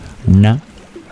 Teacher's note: the sound na with the N and the dot under it, you curl your tongue back to make it